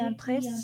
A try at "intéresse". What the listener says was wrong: Intéresse. Prononce bien le E, le premier E. C'est pas intresse, c'est intéresse.